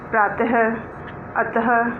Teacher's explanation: आहा विसर्ग कहलाता है। इसे बोलने में कुछ ह की आवाज़ आती है।